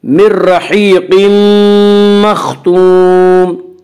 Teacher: यहाँ तनवीन के बाद यूमिनु के 4 हरफों में से मीम है, इसलिए यहाँ पे इदगाम बिल गुन्ना होगा